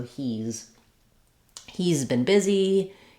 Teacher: not an S sound not a s but a z and we drop the H and the a so there's no h sound no h sound no a vowel just the z sound so · we just say the final sound which is a z sound in has not an S sound not a s but a z and we drop the H